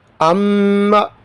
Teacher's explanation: یہاں پر میم ساکن ہے پہلے، کیونکہ یہ میم مشدد ہے نا، اس لیے تھوڑا سا غنہ کریں گے۔